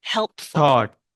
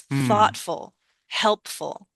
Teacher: We don't stress the full, we stress that root word